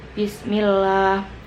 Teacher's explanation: terdapat hukum bacaan tarqiq karena sebelum lafadz Allah dibaca tipis